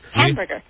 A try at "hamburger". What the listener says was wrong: Hamburger. Now you say ham, you're putting the emphasis on the ham instead of the burger.